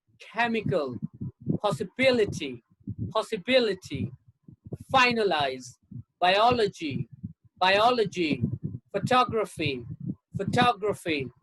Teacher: l o g y and g r a p h y you have the stress on the third syllable from the end